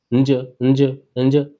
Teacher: तालु पे आप जीभ टच करो और साथ में क्या बोलो, आप नाक से आवाज निकालो, नाक से भी हवा निकालनी है और जीभ को कहाँ टच करके निकालनी, तालु पे।